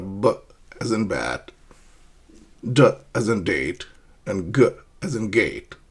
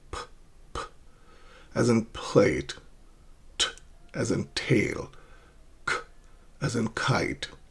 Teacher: a complete closure before you let out a burst of air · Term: pllosive consonants